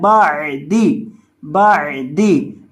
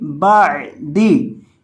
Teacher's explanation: اس کو بعدی نہیں پڑھنا، اس کو پڑھنا ہے بعدی، بعدی، با زبر عین با، دال زیر دی، بعدی، بعدی. یہ جو عین ہے اس کو حلق کے بیچ سے ادا کیا جاتا ہے